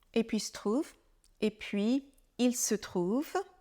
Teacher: on a déjà parlé du L de il que l'on ne prononce que très rarement à l'oral